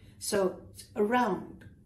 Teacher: The emphasis is on round, not on the A.